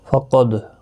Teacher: ام یحسدون الناس علی ما آتاهم اللہ من فضلہ فقد آتینا آل ابراہیم الکتاب والحکمہ۔ فقد قاف مستعلیہ ہے، پر پڑھا جائے گا، دال ساکن پر قلقلہ ہوگا، حمزہ کے اوپر کھڑی زبر ہے، ایک الف کی مقدار کے برابر کھینچ کر پڑھیں گے۔